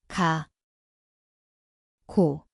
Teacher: Ini adalah huruf >> kiok. >> Ia berbunyi seperti G garis miring K. Tempatnya adalah belakang lidah. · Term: 기억